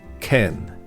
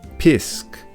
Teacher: And unlike Brythonic, which became influenced by later continental Celtic language development, Gaelic retained various archaic Celtic features, such as the loss of the P sound